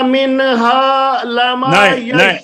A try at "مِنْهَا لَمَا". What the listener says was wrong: نہیں حاجی صاحب، من نہیں، من ہا، آواز بند ہو جائے نون. من ہا نہیں جی.